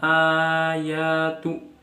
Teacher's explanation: mad badal, di mana ada hamzah yang dibaca panjang